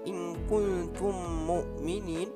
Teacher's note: memasukkan mim mati yang pertama ke dalam mim yang kedua dan dibaca secara berdengung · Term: idgham mimi